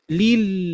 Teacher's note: dari pinggiran lidah menempel ke langit-langit gusi gigi seri atas itu dengan menempelkan secara keseluruhan